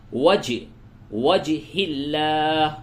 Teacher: جیم ساکن ہے، یہاں پہ قلقلہ کیجئے